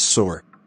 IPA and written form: sɔːr (Sore)